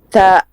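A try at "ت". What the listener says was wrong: Stretch it 1 second. Ta. Yeah, soft and light. Yeah, and because if we make this letter heavy, then there will be a ah sound.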